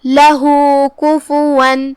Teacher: یکل لہو، کلمت لہو میں یہاں ہاں پہ یہ علامہ ہے الٹا پیش، اس کا مطلب ہے یہاں مد صلہ صغرا ہے، ہم اپنی آواز 2 مد کے برابر لمبی کریں گے